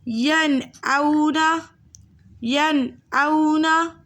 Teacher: نون ساکن تنوین کے بعد حرف حلقی، حرف حلقی 6 ہیں: حمزہ، ہا، عین، ہا، غین، خا میں سے کوئی حرف آ جائے تو نون ساکن کو اس کے مخرج اور صفات کے ساتھ ظاہر کر کے پڑھتے ہیں، جیسے ینعونا، ینعونا۔ ہم نے غنہ نہیں کرنا، ہم نے ظاہر کر کے پڑھنا ہے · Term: اظہار حلقی